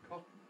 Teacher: So going straight from the T to the N